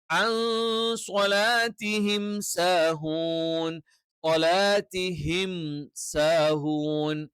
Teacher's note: സാക്കിനായ നൂനിന് ശേഷം സ്വ വന്നാല് മറിച്ച് മണിക്കണം, അഥവാ ഇഖ്ഫ എന്ന് പറയും.